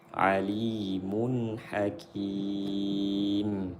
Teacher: Tanda tanwin izhar karena bertemu dengan huruf halqi, disebutlah izhar halqi. Tanwin bertemu dengan huruf halqi disebut izhar halqi. Dibaca jelas. Alimun, tanwinnya, bunyi nunnya dibaca jelas.